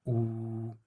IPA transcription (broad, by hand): u